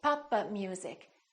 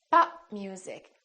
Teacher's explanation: it sounds almost like four syllables Papa music instead of pop music three syllables so make sure that you hold the stop let me give